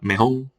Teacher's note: En posición implosiva. Se sustituye incluso la R final por nasal, mejón. En Cádiz, Sevilla se escucha mucho en lugar de mejor, mejón.